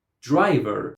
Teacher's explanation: Stress goes on the first syllable because the second syllable has a schwa